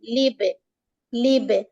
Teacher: ब पर कलकला हो रहा है